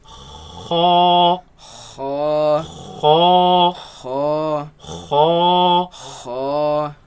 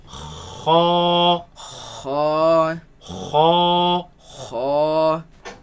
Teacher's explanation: So the root of the tongue raises against the uvula, and the commotion is what makes this sound.